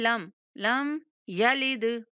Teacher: لم یلد، میم کو ہلا کر نہیں پڑھیں گے، لم لم یلد، دال کو ہلا کر پڑھیں گے، دال پہ قلقلہ ہے۔